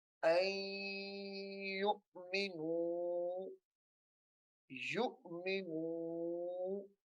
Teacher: یہاں پہ ہم غنہ کریں گے کیونکہ نون ساکن کے بعد حروف یرملون میں سے یا آ رہا ہے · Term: ادغام